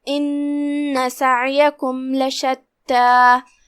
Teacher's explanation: कलिमत लशत्ता में यहाँ जो कि लाम पे ज़बर है तो उसका ध्यान रहे हम लाम को ज़बर से पढ़ेंगे। फिर हर्फ ता है और उस पर तशदीद है तो हम 2 हर्फ के मकदार में ता को पढ़ेंगे। आखिरी में मद तबीई है तो हम अपनी आवाज़ 2 मद के बराबर लंबी करेंगे।